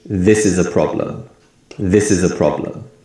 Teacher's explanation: we put more emphasis on the word this and the first syllable of problem and other words and syllables become weak sounds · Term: stress